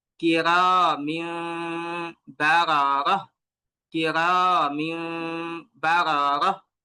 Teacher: যখন আমরা মিমকে মিলিয়ে পড়বো তখন আমাদেরকে নাক থেকে দুই আলিফ টেনে পড়তে হবে। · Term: ইকলাবের